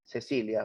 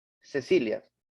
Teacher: la punta de la lengua se ha dirigido hacia el diente inferior hacia la parte posterior del diente inferior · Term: seísmo